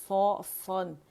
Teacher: ज़बान की जड़ भी उठी हुई है, प्याला बनी हुई है ज़बान, तो फिर उसी से आप सन सुन अदा करें, नून बारीक होगा।